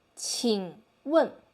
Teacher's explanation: I make my third tone with 1 beat only and focus on the first beat